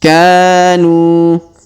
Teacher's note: Huruf ka kita panjangkan 2 harokat karena terdapat alif di depannya